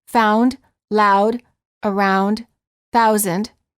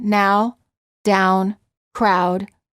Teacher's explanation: the ooh the lips begin to close and become more tense the tongue moves from a relaxed low position to a high position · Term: ow sound